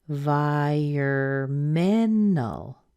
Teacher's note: Vai is a secondary stress so it's not as strong as men but it still gets some stress you can hear the the pure of vowel in there there's